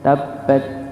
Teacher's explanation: Yang pertama kurang menekan kurang menekat pada huruf ba. Kurang ditekan ya di huruf ba yang dia ada tasydid. Harus dibaca ditekan.